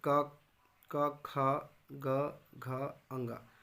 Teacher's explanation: जिह्वा के पिछले भाग कोमल तालु को स्पर्श करते हैं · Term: कंठ